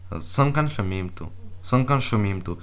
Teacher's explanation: The stress would be in imtu, but it would not lengthen the vowel.